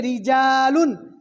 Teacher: اس میں را کو باریک پڑھیں گے اس لیے کہ را کے نیچے زیر ہے۔